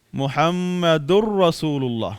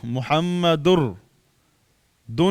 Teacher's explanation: تنوین را کے اندر مدغم ہوا، را پر شد آئی · ادغام تام میں غنہ نہیں ہوتا، ذرا بھی غنہ نہیں کرنا ہے، یعنی ذرا بھی نون کی آواز نہیں دینی